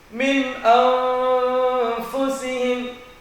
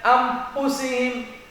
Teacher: Fa-nya harus menimbulkan ada suara, ada nafas yang terhembus. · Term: huruf fa